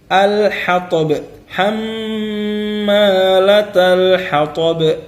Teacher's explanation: Jadi ba ini jangan lupa untuk membaca dengan qalqalah.